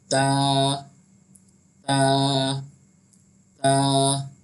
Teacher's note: ता जो है वो बारीक पढ़ा जाता है। अगर ता को हमने मोटा पढ़ा तो ये तो हो जाएगा और ये गलत हो जाएगा। तो ता का जो मखरज है वो ये है, जब हम ता अदा करते हैं तो ज़बान की नोक, ज़बान की जो आगे का जो फ्रंट हिस्सा होता है उसको कहते हैं ज़बान की नोक।